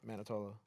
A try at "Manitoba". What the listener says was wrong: There's a B in it.